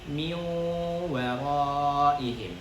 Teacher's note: benar-benar harus kita dengungkan nun sukun bertemu waw dan harus masuk ke hidung ya. Jadi karena makharijul huruf gunnah, huruf-huruf yang memiliki gunnah itu makharijul hurufnya adalah al-khayshum. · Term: idgham bil gunnah